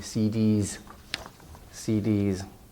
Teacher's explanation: It actually, you say D, it ends in a vowel E, and so the S becomes voiced into a Z